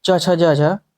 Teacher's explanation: च वर्ग के प्रारंभ के 4 वर्ण हैं च छ ज झ, ये स्पर्श संघर्षी व्यंजन कहे जाते हैं